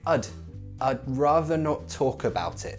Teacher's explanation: We're using glottalized T's here. This connects together